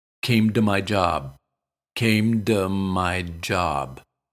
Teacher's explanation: when the word to comes after a word ending in a voiced sound it's commonly pronounced with d instead of T also note that when it's unstressed it's usually pronounced with uh